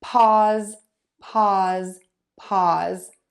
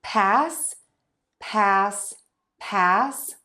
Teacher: So this vowel might sound a little bit longer in pause than it does in pass. And that's because of the voicing on that Z sound.